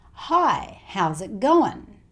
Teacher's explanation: it's also quite common for the ing sound in going to change to the n sound. So the schwa sound and the n sound.